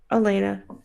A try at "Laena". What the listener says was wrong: just like a Laena, but without the A at the beginning. Laena.